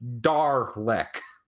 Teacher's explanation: over here we don't really have a subtle R noise in our accent, so it becomes Darlek